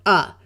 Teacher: the schah is a muffled lazy sound it usually sounds like a short u sound of uh